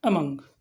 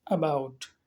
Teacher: अमंग को थोड़ा सा झटके के साथ बोलेंगे, लेकिन अबाउट को उतने झटके के साथ हम नहीं बोलेंगे